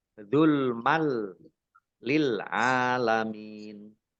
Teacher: Tanwinnya tidak dibaca, langsung masuk ke huruf lam, tetapi tidak mendengung. Ditandai lamnya ada tasdidnya. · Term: idgham bila gunnah